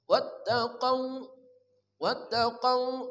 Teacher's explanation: Waw mati sebelumnya fathah mad lin. Panjangnya kurang dari 2 harokat.